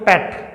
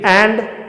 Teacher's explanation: एक तो बोलते हैं अपन पैट, क्या होता है, थोड़ा सा मुंह खुलता है, लेकिन एंड पूरा मुंह खोलना पड़ता है ए बोलने के लिए. तो ये ए है, एंड कैसे बनेगा, ये इस तरीके से इसका फोनेटिक ट्रांसक्रिप्शन रहेगा.